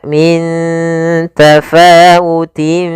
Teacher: Maka cara membacanya yaitu samarkan tanwinnya ke huruf fa. Maka min tafawutin, langsung ke makhraj huruf fa. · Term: ikhfa